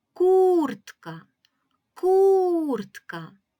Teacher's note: ми вимовляємо з більшою силою голоса кур - це перший склад Отже в слові куртка наголошений перший склад